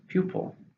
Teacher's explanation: How many syllables? 2, stresses on the first. Pupil.